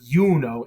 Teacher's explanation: her name is Juno in English but yuno in Latin it has a y it's almost like a y at the beginning of it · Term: consonantal I